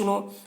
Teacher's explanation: پیش کو جلدی پڑھیں، تھوڑا بھی نہ کھینچیں، معروف پڑھیں، مجہول آواز سے بچیں